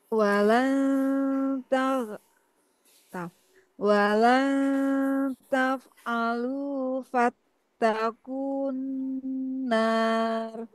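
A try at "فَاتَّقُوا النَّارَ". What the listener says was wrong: Nah, ini ku-nya langsung ke N saja. Kun.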